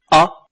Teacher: when pronouncing a, the body of the tongue is positioned in the center of the mouth. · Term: central vowels